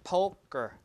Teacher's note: the stress is in the front syllable okay so the K is unstress and therefore unaspirated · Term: unaspirated K